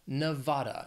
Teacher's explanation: it has three syllables stress is on that second syllable